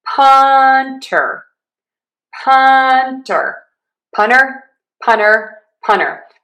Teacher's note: punner with an N. You kind of drop that T.